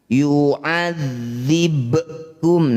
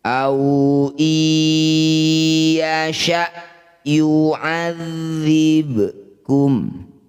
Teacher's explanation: Bunyi ba ini dipantulkan, pantulannya kecil saja, tidak boleh berlebihan. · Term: qalqalah sugro